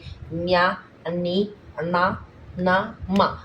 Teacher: అనునాసికములు అంటే ముక్కు ద్వారా పలికే అక్షరాలని